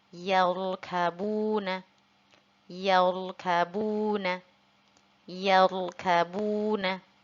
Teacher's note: di sini huruf ro-nya kita baca tebal atau tafkhim kan, karena sebelum huruf ro sukun ada huruf yang berharokat fathah, yaitu huruf ya ya pada kata tersebut.